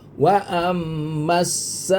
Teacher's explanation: Ini mad asli bertemu dengan Hamzah dalam satu kalimah mad wajib lima harakat.